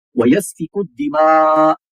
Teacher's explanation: اب یہ کاف کو دال کے ساتھ جوڑیں گے اور الف اور لام یہ حذف ہو جائیں گے ، یعنی کہ یہ آپ ایسا سمجھیں کہ یہ سائلنٹ ہو